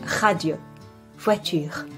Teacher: The sound r does not exist in English. It is a raspy sound that comes from the back of the throat.